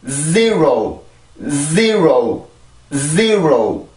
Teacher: 강세가 있는 음절의 시작이 Z 발음이기 때문에 강세로 올라가기 위해서 아주 강한 순수 소리가 먼저 나오게 되죠. 이게 준비 동작이라고 말씀을 드렸습니다.